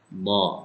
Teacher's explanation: Do itu berada salah satu dari tepi lidah dengan geraham atas.